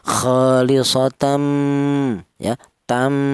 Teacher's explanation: cara bacanya itu ada dengungnya dua harakat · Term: idgham bighunah, idgham bihunah